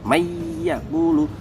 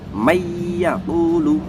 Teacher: nun sukun masuk ke huruf ya, mayyaqulu. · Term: idgham bi gunah